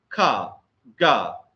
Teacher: the air passage is closed by pressing the back of the tongue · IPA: k-g